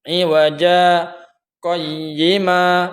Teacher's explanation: Saktah di sini berarti berhenti sebentar tanpa bernafas.